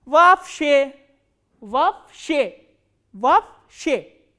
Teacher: this double o will be pronounced as a single a